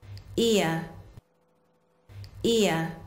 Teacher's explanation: So if we talk in brief about this sound, as you say, the sound ear, your mouth will start on the position of the e sound and finish on the position of the sound the schwa sound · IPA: /ɪə/